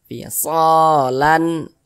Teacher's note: Dibaca jelas dan tidak berdengung. Baca pendek saja. Lan jangan dibaca lan an, jangan baca pendek lan an begitu. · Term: izhar halqi